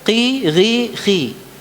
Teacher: seakan-akan tafhimnya itu hilang Padahal dia tetap ada hanya saja dia pada tingkatan yang paling rendah ya jadi dia tetap dibaca tafkhim pertanyaannya Apa yang membedakan antara